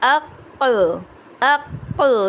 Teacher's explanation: ایک قاف کو ہم نے ساکن کیا اور دوسرے قاف کو ہم نے قلقلے کے ساتھ ادا کیا